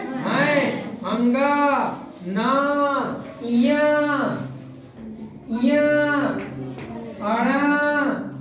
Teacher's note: जो वर्ण मुख और बोले जाते हैं। मुख और नासिका दोनों से बोले जाते हैं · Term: अनुनासिक संज्ञा